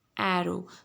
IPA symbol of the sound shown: æ